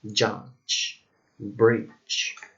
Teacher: a voiced palatoalveolar and affricative sound